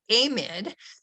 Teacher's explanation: a mid is a plausible pronunciation it's a possible pronunciation but they use the long a instead of the schwa